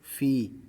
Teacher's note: یہ یا مدہ ہے، اس کو 1 الف کی مقدار کھینچ کر پڑھنا ہے، یعنی مدہ والی تختی سے اس کو 1 الف کی مقدار کھینچ کر پڑھنا ہے۔